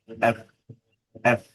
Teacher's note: এফ হচ্ছে নিচের ঠোঁট উপরের দাঁত একসাথে লাগিয়ে উচ্চারণ করতে হয়, এফ, এফ, উপরের দাঁত নিচের ঠোঁট।